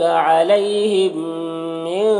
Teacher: علیہم یالین سے نرم آواز کے ساتھ جلد پڑھیں گے. میم ساکن کے بعد میم ہے تو میم کو میم سے ملا کر غنہ کے ساتھ میں پڑھیں گے، اس کو ادغام شفوی کہتے ہیں.